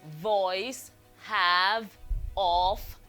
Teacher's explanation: So this is a voiced fricative made by putting your upper front teeth on your lower lip. Okay, this is a voiced labiodental fricative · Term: V sound